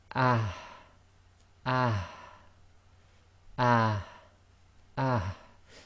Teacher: It's the h that comes right from the bottom of the throat. Now this one's very difficult because what you've got to do with especially with the uh sacking version of this is bring the sound out but not bring the air right out. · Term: soft h, soft ha